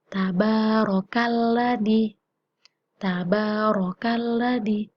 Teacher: Ro-nya itu dibaca tebal. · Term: tafkhim